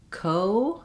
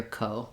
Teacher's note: It is a diphthong. So in English, O is a gliding vowel. We start rounded and then we close a little bit.